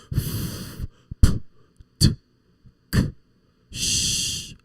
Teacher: sometimes in a language, we have sounds that we don't use our voices. Like, for example, sh. See? Only air, no voice. These sounds we call voiceless, when we don't make the use of voice to produce a sound.